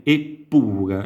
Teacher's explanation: Questa è la congiunzione, e pure, e infatti vediamo che abbiamo una doppia P, perché nella fonetica, nel suono, abbiamo il raddoppio della P